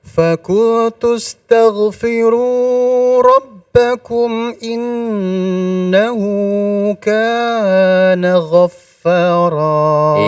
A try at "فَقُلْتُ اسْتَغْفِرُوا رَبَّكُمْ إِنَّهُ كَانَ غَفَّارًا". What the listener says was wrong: Iya, kurangi ya. 2 harokatnya dikurangi sedikit. Faqultu astaghfiru rabbakum innahu kana ghaffara.